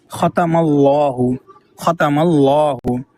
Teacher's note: دوسری مثال ختم اللہ، ختم اللہ، میم کے پہلے زبر آ گیا، لام سے پہلے زبر آ گیا میم کے اوپر، تو یہاں پر بھی لام کو پر پڑھا جائے گا، اور لام کے جسٹ بعد الف ہے اور لام پر ہے، اس لیے الف بھی پر ہو جائے گا۔ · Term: تفخیم